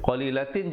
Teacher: izhar jangan dipanjangkan, bunyi saja tin terus masuk